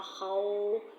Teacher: واو لین ادا کرتے وقت ہونٹ جو ہے ہمارے پوری طرح گول ہو رہے ہیں